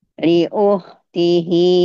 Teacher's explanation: Jadi kh itu bunyinya seperti orang yang sedang mendengkur Ibu. Sedang mendengkur atau lagi ngorok.